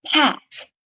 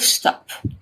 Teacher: the aspirated P sound at the beginning of pat and the unaspirated P sound at the end of stop are alophones of the same phone P.